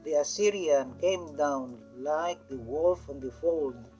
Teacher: There is the regular succession of two unstressed syllable and one stressed syllable. As you could see, the line now is divided into 1, 2, 3, 4 meters. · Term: anapestic tetrameter